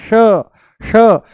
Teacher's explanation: जैसे ही हम बोलते हैं श, जैसे ही बोलते हैं हम श, मूर्धा ऊपर से बोला जाता है, श श, जीभ को थोड़ा सा ऊपर घुमा करके तालू से लगा करके बोला जाता है